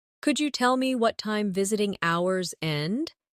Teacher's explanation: In connected speech could you becomes could ya.